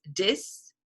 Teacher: the African American vernacular speakers convert TH sound to D. So this becomes dis, right? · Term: TH conversion